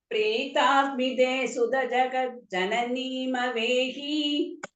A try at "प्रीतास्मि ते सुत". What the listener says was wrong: सुद சொல்லக்கூடாது மாமே சுத்த.